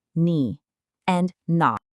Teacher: So guess what? No change. They both keep their full dipping third tone.